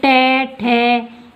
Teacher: जिह्वा है वो मुड़कर तालु के आगे मूर्धा के स्पर्श हो रही है।